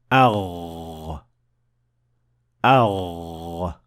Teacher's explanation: the sound of ghain is not produced by pushing air or breath out. It is rather produced by vibrating your vocal cords, which is something that you can feel when you touch your throat with your hand when pronouncing the ghain.